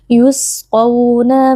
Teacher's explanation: mengangkat pangkal lidah yusquna di sini juga ada bacaan Lin karena ada wau sukun sebelumnya berharakat fathah dibaca dengan lunak